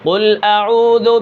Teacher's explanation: قاف ایک تو موٹا ہے اور اس کے اندر صفت قلقلہ بھی پائی جاتی ہے